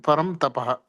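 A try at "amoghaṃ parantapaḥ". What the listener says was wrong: No, not mama. Amanognyam parantapaha.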